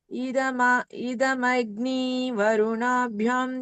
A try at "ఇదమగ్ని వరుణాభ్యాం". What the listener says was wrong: ఇక్కడ భ్యం అంటున్నట్టున్నారు భ్యాం దీర్ఘం కదా సో భ్యాం